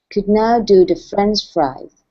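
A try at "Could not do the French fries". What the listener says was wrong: Okay, so the TH sound is a big one for you. Okay, so here you're saying duh. Could not do duh. So instead of duh, it's the.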